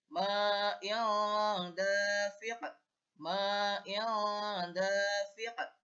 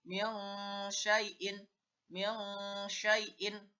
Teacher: cara membacanya daripada ikhfa hakiki ini adalah suaranya nun mati atau tanwin diganti dengan suara eng